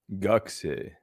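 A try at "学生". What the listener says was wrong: Like it feels like you're saying gak. No. Gaku. Gakusei. Gakusei. Don't gak. There's no gak. It's gaku. There's no. You don't stop at the K. You gakusei. Gakusei. You don't stop at a letter in Japanese. You just say everything fluently.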